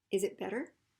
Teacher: And it's a question, so we're going to rise it